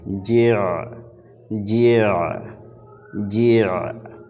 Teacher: عین کو پڑھنا تھوڑا مشکل ہوتا ہے۔ عین کو پڑھتے وقت ان کے مخرج کو ایسا سمجھیے یوں کہ آپ اسے گھونٹ جاتے ہیں حلق کے نیچے